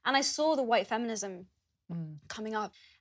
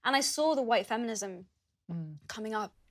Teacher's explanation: As you can hear, uses a long /ɔː/ sound in the word 'saw'.